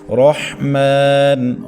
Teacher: بسم اللہ الرحمن، ہا یہ بھاری حروف میں سے ہے، حلق کے آخری حصے جو سینے کے ساتھ متصل ہوتا ہے وہاں سے اس کو ادا کرنا ہے۔ رحمن، را کو زبر کی وجہ سے ہم نے موٹا کر کے یا پر کر کے پڑھنا ہے، اور اس کے بعد ہا کو حلق کے درمیان سے باریک کر کے ساؤنڈ نکالنا ہے۔